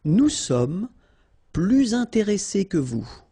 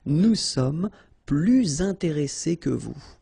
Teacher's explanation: you make this little link, little liaison between the two, so you hear a little bit this S